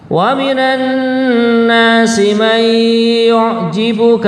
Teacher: Mai gitu, nonnya diidghamkan kepada ya, kemudian ada gunnahnya. Jadi seakan-akan nonnya itu tidak ada, tapi adanya ya tapi ditambah gunnah gitu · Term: idgham bi gunnah